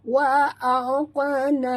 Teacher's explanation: huruf qaf adalah huruf qalqalah. Jadi bila dia mati di tengah kalimah, lantunkan dia ya. Wa aqna, lantun lunak ya.